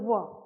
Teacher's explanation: उसमें थोड़ा सा दांत का हुआ स्पर्श और थोड़ा सा ओष्ठ का स्पर्श